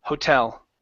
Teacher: With this word, the stress is on the end.